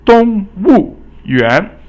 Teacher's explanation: 园 is 二 声, so it's rising